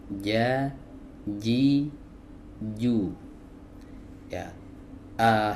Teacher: Huruf jim keluar dari wasatul lisan atau tengah lidah ya. · huruf jim ini tidak memiliki sifat hams.